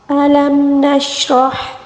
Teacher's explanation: را کو پر پڑھیں گے، را کیونکہ را کے اوپر زبر ہے، اور ہا کو حلق کے درمیانی حصے سے ادا کریں گے۔